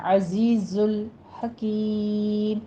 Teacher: عزیز الحکیم، حکیم میں ہا وسط حلق سے ادا کریں گے، کاف کو باریک پڑھتے ہوئے آگے مد عارض وقفی کر دیں گے، یہاں پہ 6 کاؤنٹ کرنا ہے۔